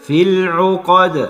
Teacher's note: بدام سكننا الدال هنعمل قلقلة في العقد